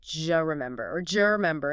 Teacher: What happens is assimilation and reduction combined. The D sound at the end of do and the J sound like Y in yes at the beginning of U often merge together. >> D plus Y just >> Exactly. · They create a D sound, the J sound in judge. And the vowel in U often reduces to schwa or disappears. So, do you remember can absolutely sound like j remember or jer remember in rapid casual conversation.